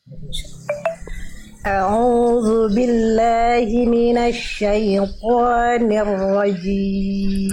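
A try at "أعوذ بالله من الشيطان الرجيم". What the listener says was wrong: Sip, tinggal ni-nya jelaskan. A'udzu billahi minasyaitonir rajim. Nir rajim, jangan nir, tapi ni.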